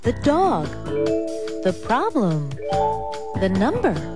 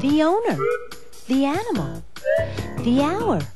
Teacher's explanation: the before a consonant sound the dog the problem the number you hear thee before a vowel sound